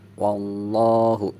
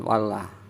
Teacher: Sebelum lafaz Allah ada huruf berharokat fathah, maka lafaz Allahnya dibaca tebal. Artinya dibacanya wallahu, jangan wallah. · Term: lam jalalah tafhim